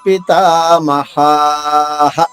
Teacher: పితామహాః. మా హా దీర్ఘంగా, రెండవ హ హ్రస్వంగా. తథైవ చ పితామహాః.